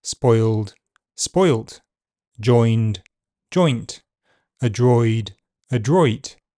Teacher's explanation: Oi is a long vowel sound, so it is shortened before voiceless consonants.